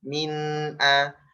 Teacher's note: Min, nunnya dialirkan suara an